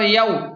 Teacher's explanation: یا واو زبر یو، یہاں پر واو لین ہے تو اسے جلدی اور نرمی کے ساتھ پڑھیں